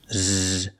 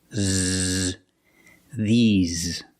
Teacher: And the S makes a Z sound, like zebra. Z. You have a voice, you have vibration.